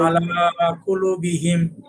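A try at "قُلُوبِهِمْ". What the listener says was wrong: কুলুবিহিম। হ্যাঁ, কুলু টান দেন, কুলুবিহিম।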